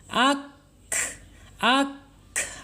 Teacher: hati-hati tidak boleh ak berhenti ya atau ak tidak boleh ya KF tidak mempunyai sifat Qalqalah kemudian KF pun tidak boleh berhenti karena dia mempunyai sifat alhams